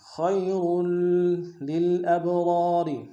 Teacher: اللہ وما عند اللہ خیر، خا کو یا کے سامنے لانا، خا کو موٹا ادا کریں گے، یا لین بغیر کھینچے پڑیں گے ، اور کو تنوین کو آگے لام کے سامنے لانا ہے،